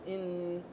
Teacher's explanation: الأصوات الأنفية، نعم. أنفمية، يعني لها طبيعتين أثناء النطق كما تعلمون، بأن اللسان يقفل على الحنك الأعلى ويرجع الصوت إلى اللهات ثم يمر بالحجرات الرنينية ينتج لنا صوت النون